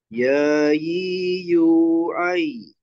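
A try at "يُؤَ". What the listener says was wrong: Yu ai-nya bukan pakai ain ya, pakai hamzah.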